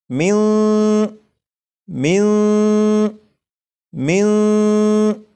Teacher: اس نون ساکن کو چھپا کر پڑھوں گا